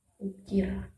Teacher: Vokal U adalah vokal belakang tinggi bundar. Vokal ini diucapkan dengan meninggikan bagian belakang lidah dengan kedua bibir agak maju ke depan dan sedikit membundar.